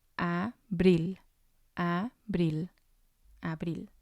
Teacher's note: And the stress is going to be on the last one